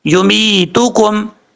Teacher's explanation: میم کے بعد جو یا ہے یہ یا مدہ ہے، ایک الف کی مقدار اس کو لمبا کر کے پڑھیں گے